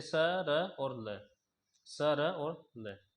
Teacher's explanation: दांत प्लस मसूड़ा, दांतों का और मसूड़ों का दोनों का इस्तेमाल होगा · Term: वत्सरीय